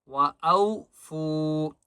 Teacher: و او، حمزہ واو زبر او، وَأَوْفُوا فا کو ایک الف کی مقدار کھینچ کر پڑھیں گے